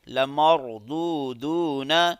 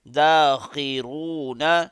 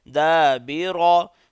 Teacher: را کو موٹا کر کے پڑھیں گے